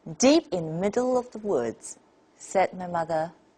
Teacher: the reporting phrase is spoken in a level tone